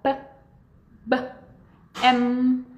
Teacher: Tanto o P quanto B, quanto o M, eles são sons que a gente chama de bilabials, porque eles são produzidos pelo lábio